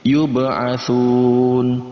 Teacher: Kemudian ada ba berharokat sukun, maka masuk dalam kategori qalqalah. Kita pantulkan huruf ba yang berharokat sukun ini.